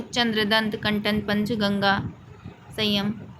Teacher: अनुस्वार जिसमें नाक से अधिक मुख से कम वायु निकलती है या तत्सम संस्कृत शब्दों में प्रयोग होता है।